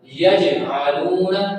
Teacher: آگے ہے یجعلون، جیم ہے، جیم کا کلکلا کرنا ہلکا سا، زیادہ نہیں کرنا